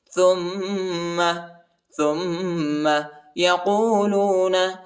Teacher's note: تا کو میم کے ساتھ ملائیں گے، میم کے اوپر غنہ کریں گے، میم کے اوپر شد آیا ہے